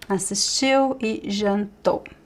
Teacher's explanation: The stress is at the end.